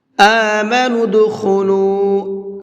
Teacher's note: لام کو تھوڑا سا کھینچ کر کے پڑھیں گے، اس لیے کہ یہاں پر واو مدہ کا قاعدہ ہے، واو ساکن ہے اور اس سے پہلے پیش ہے۔